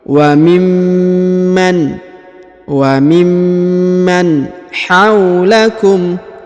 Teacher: Perhatikan huruf mim ditahan dan ditekan karena terdapat tanda tasdid.